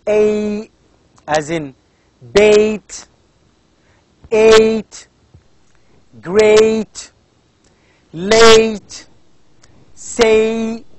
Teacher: it's not only one sound it's two sounds a combination of two sounds which is called as diphthongs